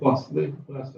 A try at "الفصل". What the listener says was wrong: No, it's fine. Fosli. You said fast. It's fosli.